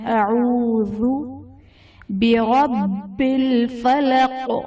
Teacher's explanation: اعوذ میں واو ساکن سے پہلے پیش ہے، واو مدہ کا قاعدہ ہے۔ ذال میں ہم نے سختی بالکل نہیں کرنی ہے، یہ بغیر سختی اور بغیر سیٹی کے بالکل نرمی کے ساتھ حرف ادا ہوگا۔